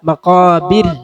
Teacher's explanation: മഖാബിർ ബിർ അല്ല, മഖാബിർ. മഖാബിർ എന്ന് തർഖീഖ് ചെയ്ത് നേർപ്പിച്ച് ഉച്ചരിക്കുക. ഖാഫിനെ കനപ്പിച്ച് ഉച്ചരിക്കുക. മഖാബിർ എന്ന് പറയരുത്.